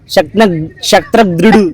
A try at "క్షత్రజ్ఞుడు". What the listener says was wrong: షా కాదు, క్ష. క్షత్రజ్ఞుడు.